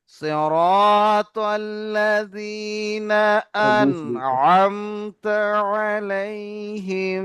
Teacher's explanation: মাশাআল্লাহ, নুন সাকিনের পরে হরফে হালকির আইন এসেছে, তাই এখানে গুণনা হবে না। বিনা গুণনায় তাড়াতাড়ি পড়তে হবে, একে ইজহার বলে